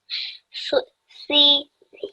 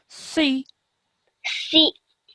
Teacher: you're still keeping that heavy, thick sound because it's a thick sounding letter, but we produce it with the sound of a kasra